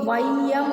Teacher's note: இங்க நாம ரெண்டுன்னு சொல்லக்கூடாது இதுக்கு மாத்திரை அளவு எவ்வளவு ஒன்றரை மாத்திரை சரியா ஐகாரம் சொல்லில் முதலில் வரும் பொழுது ஒன்றரை மாத்திரை அளவில் ஒலிக்கும் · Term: ஐகாரக் குறுக்கம்